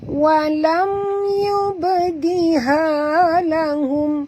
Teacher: mim mati bertemu ya, tak boleh dengung, izhar syafawi